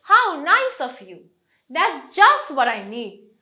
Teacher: আমি যখন কোনো কিছুকে ওয়াও, ওয়ান্ডারফুল এরকম করে বলতে চাই, এবং এটা যখন একটা সেন্টেন্স আকারে হয়, আমার শুরুর ব্যাপারটাতে অনেক টোন দিতে হবে, হাই টোন দিতে হবে, লাস্টে আস্তে আস্তে করে ফলিং ইন্টোনেশন।